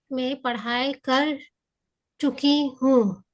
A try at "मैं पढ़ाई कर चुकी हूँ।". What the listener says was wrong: Correct sentence.